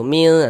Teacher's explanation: Cara membaca ikhfa itu dibaca samar dan berdengung. · bunyi non sukunnya jangan dibaca min jelas begitu jangan. Tapi disamarkan kemudian didengungkan. Jadi bagian min ah nah disamarkan begitu min. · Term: ikhfa hakiki